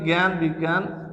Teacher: বর্গীয় জ আর ইও যখন সংযুক্ত হয়েছে, তখন এটা গগের মতো হয়েছে